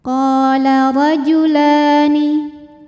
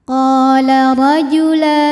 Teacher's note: Ra dihukumi dengan ra yang dibaca secara tafkhim karena ra barisnya di atas yaitu baris fathah. Maka huruf ra ini kita bunyikan dengan tebal dengan mengangkat pangkal lidah